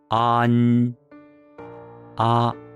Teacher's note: A-n, where a is dominant, and the sound is nasalized with the nasal consonant n